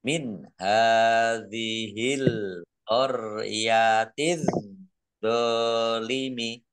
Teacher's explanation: Alif lam syamsiyah karena tidak dibaca langsung masuk ke huruf berikutnya yaitu dha, ditandai dha-nya ada tasdidnya. Dha-nya dibaca double.